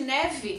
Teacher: Neve, vogal E passa a ter som de I.